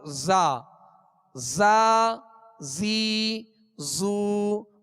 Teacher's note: زا کو، یہ دونوں باریک حروف ہیں، فرق کیا ہے کہ زا کو سیٹی کی آواز میں زا، زا زیادہ تکلف بھی نہ ہو کہ ایک دم زا اس طرح بھی نہیں، بلکہ سیٹی کی آواز پیدا ہو اور سختی سے ادا ہو۔